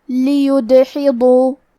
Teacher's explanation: ہمیں دال کو قلقلہ سے پڑھنا ہے، اور قلقلہ کا معنی ہے حرف ساکن کو ہلانا، تو ہم دال کو ہلاتے ہوئے یہ کلمہ کو پڑھیں گے، لیدحضوا۔